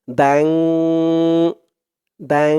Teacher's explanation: গুন্না হয়েছে বা গুন্নাটা নাকের ভিতরে চলে গেছে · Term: ইকফা গুন্না